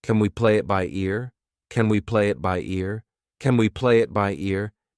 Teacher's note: We pronounce it as kin, unstressed